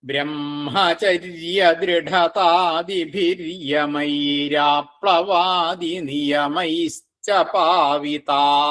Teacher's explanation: ഇവിടെ കൂട്ടിച്ചെല്ലുന്ന സമയത്ത്, രണ്ടു വരിയും കൂടി കൂട്ടിച്ചെല്ലുന്ന സമയത്ത് ദൃഢതാദിഭിര്യമൈ എന്നുള്ള വിസർഗം ര് എന്നായിട്ട് മാറും. എന്നിട്ട് ആപ്ലവാദിയുടെ കൂടെ കൂടും. അപ്പൊ ര് ആ ആവുമ്പോ രാ എന്നാവും.